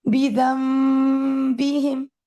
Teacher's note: नून पूरा का पूरा मुंह में मीम में तब्दील हो गया। · یہ اقلاب ہے، دس از a change of letter, نون into میم. اور اس میں ہم گناہ کو کرتے ہیں ظاہر، کیونکہ حرف میم جو ہے وہ بھی گناہ کے بغیر ادا نہیں ہوتا. تو یہ جو گناہ ہم کر رہے ہیں یہ میم کا گناہ ہے، جیسے بیدم بیہم، یہ میم کا گناہ ہے جو ہم یہاں پہ کر رہے ہیں. · دوسرا کہ جب ہم اقلاب پڑھ رہے ہیں تو اس میں ہم نون کے مخرج کو بالکل ہی میم میں تبدیل کر دیتے ہیں. نون changes to میم، nothing from the نون exist, نون پورا کا پورا میم میں تبدیل ہو گیا. یہ اقلاب ہے، دس از a change of letter, نون into میم. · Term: इकलाब